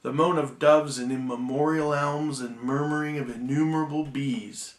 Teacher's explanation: each of these lines has 10 syllables that alternate, stressed and unstressed. You might remember, if you've ever studied English, that's called iambic pentameter.